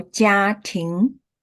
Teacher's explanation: 家 is 第一声，庭 is 二声 second tone, first tone 家 second tone 庭